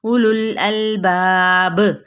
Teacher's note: उलुल अलबाब, अब यहाँ पे हमने कलकला करके छोड़ा क्योंकि बा था, तो यहाँ पे वक्फ बिल इस्कान हो गया। · अब ये हमज़ा की पेश को लाम के साथ मिलाएंगे।